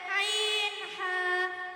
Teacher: হলকের মধ্যখান হইতে আইন হা